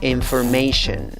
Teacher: Esta palabra tiene 2 sílabas con fuerza, siendo la tercera sílaba la que lleva la mayor fuerza de voz y la primera sílaba la que lleva la fuerza de voz secundaria. En la primera sílaba la vocal es una I, pero es una I corta. · En la tercera sílaba, la A con el guión arriba se pronuncia EI. La S con la H en la cuarta sílaba se pronuncia sh. Y la cuarta sílaba también tiene una vocal, a, schwa, la que no es ni E, ni A, ni O.